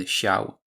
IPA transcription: ɕaw